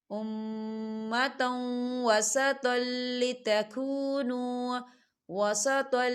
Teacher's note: تا کے اوپر تنوین ہے اور تنوین کے بعد واو آ رہا ہے، اور واو جو ہے حروف یرملون میں سے ہے، تو یہاں پر ادغام ہوگا تھوڑا سا غننے کے ساتھ